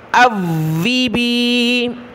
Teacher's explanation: حمزہ کو واو کے ساتھ ملایا، واو کے اوپر تشدید ہے، سختی کے ساتھ پڑھیں گے